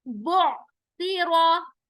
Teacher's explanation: ता नरमी के साथ, रा मोटा होगा